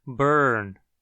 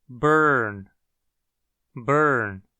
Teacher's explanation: A palavra burn, nos dialetos róticos do inglês, possui o próprio som de R, como o núcleo da sílaba.